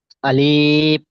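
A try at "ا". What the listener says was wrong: আলিফ টান দিলেন কেন সোনা ভাই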